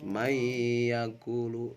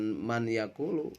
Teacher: Ya, jadi mai yakulu. Ya, nunnya dihilangkan karena dimasukkan kepada Ya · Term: idgham